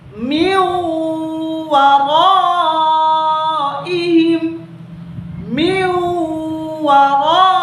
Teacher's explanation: Min waraihim, min sukun di sini kita leburkan, kita hilangkan, dan huruf mi dimasukkan langsung ke huruf waw dengan cara didengungkan, ditahan selama 2 harakaat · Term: idgham bi gunnah